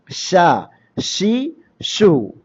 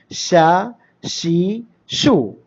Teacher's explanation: നാവിൻ്റെ മധ്യവും അതിനോട് നേരിടുന്ന അണ്ണാക്കിൻ്റെ മധ്യവും അഥവാ വിടവുണ്ടാകും. കാരണം അതിന് ഷീനിൽ ശബ്ദസഞ്ചാരവും ശ്വാസസഞ്ചാരവും ഇൻഹിബാസ് തടസ്സമില്ല. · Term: ഷീനിൻ്റെ മഖ്റജ്